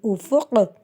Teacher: جب وقف کریں گے تو اس میں قلقلے کے ساتھ کریں گے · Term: قلقلہ